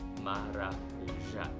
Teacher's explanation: It is stressed on the fourth, so it should be read as maracuja.